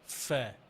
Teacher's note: উপরের দাঁত দিয়ে এই নিচের ঠোঁটের পেট ফা, প্রত্যেকটা ফায়ের মধ্যে বাতাস আছে, হ্যাঁ, হামস আছে